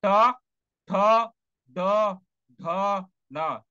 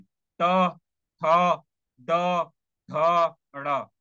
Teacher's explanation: ट वर्ण में क्या होगी? आपकी जीभ मुड़ जाएगी जब आप बोलोगे ट, ठ, ड, ढ, न, तो मूर्धन्य हो जाएगा। मूर्धन्य मतलब वहां से मुड़ना।